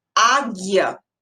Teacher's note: Muito cuidado com o GU, porque, por exemplo, quando a gente tem a palavra águia, esse GU, ele só terá um som, porque o som do U, ele não será pronunciado.